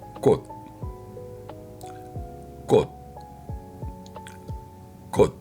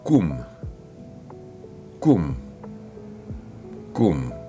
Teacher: C'est un K tendu, contracté, sans souffle. La gorge se serre, l'énergie se comprime à l'arrière de la bouche. Et puis relâchement brusque.